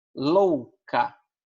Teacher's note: Aqui o O é mais forte e o U é mais fraco. Então, ditongo crescente.